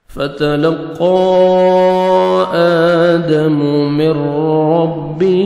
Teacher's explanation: نون ساکن بار حروف یرملون میں سے را ہے تو یہ آپ نے غنہ بغیر غنہ کے ساتھ ادغام کرنا ہے. میم کو آپ نے را شد کے ساتھ ملانا ہے اور را کو پر کرنا ہے. را کو موٹا بھی کرنا ہے. را کو زبر ہے.